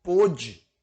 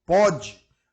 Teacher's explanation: É uma acentuação que o diferencia quanto ao timbre. Timbre fechado, acentuado graficamente. Timbre aberto, pode. Aí ele indica que o verbo está no presente do indicativo e não deve receber acento.